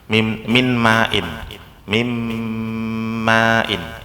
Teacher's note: Jadi nun sukunnya ngalah jadi mim, tapi dia masih punya dengung.